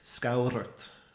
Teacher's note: you can hear it's like one massive rolled R the whole way through. So like what's happening is you get scaura with the tapped R, kind of like a Spanish tap R, and then you get the earth as well.